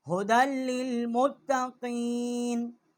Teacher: دال جو ہے اس کو ہم نے لام کے ساتھ مشدد کی ہے، یا جو ہے یہاں پر ساکت ہو گئی ہے، لکھنے میں ہے پڑھنے میں نہیں ہے